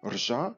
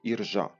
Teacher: Пізніше «єр», тобто звук «ө» після «р» випав, стало «ржа». І оскільки на початку слова в українській мові важко вимовити «рж» разом, до нього було додано протетичний так званий голосний «і». І в результаті цього «ржа» змінилося на «іржа».